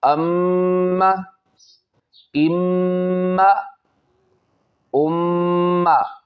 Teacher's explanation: نون مشدد اور میم مشدد میں ہمیشہ غنہ ہوتا ہے، ہم پیچھے پڑھ چکے ہیں پارٹ نمبر 1 اسی سبق کے اندر۔ ایک الف کی مقدار اس میں غنہ کریں گے